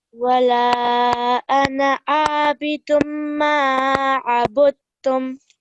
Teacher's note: So we think, oh, we need to put a noon sound in there, but we don't. The tanween we ignore the tanween and we go straight onto the meme.